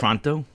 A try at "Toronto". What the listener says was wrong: You don't say the T.